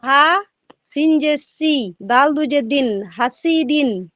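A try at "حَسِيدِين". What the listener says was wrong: না, টানটা ঠিক হলো না, টানটা প্রথমে টানতে হবে। হ্যাঁ, এইটা হচ্ছে ঠিক পড়া, হ্যাঁ সিদিন, এরকম। হা যাবার না, হালিফ যাবার।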